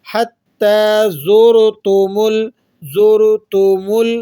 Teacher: زا حروف صفیریہ میں سے ہے، سیٹی کی سی آواز نکلے گی